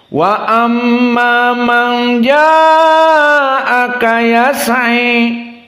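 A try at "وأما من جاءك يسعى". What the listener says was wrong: Tawil jiddan antum. Huna Al-Kisai 4 harokat saja, hitung.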